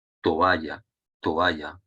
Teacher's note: por lo tanto su hiato porque ya en sí sabemos que dos vocales abiertas juntas no forman diptongo